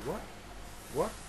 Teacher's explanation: t at the end we call unreleased t